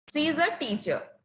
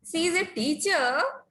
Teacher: In both the sentences, the word teacher is used, but in the first sentence, we use falling tone, and in the second one, we use rising tone